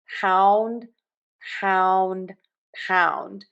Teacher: open wide for that vowel and then move to puckered lips. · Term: ow vowel